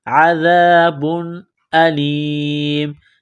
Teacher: ذال کو پڑھتے وقت زبان تھوڑی سی باہر نکالیں گے، عذاب علیم، تنوین کے بعد حمزہ ہے، حروف حلقی ہے تو تنوین پر غنہ نہیں کریں گے۔